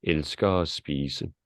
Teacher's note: At is almost absorbed between the R sound and spise.